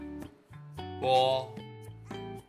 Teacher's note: Suara bibir atau labial dilafalkan seperti konsonan P dalam bahasa Indonesia.